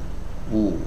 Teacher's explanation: huruf yang keluar dari dua bibir tapi dimajukan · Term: huruf w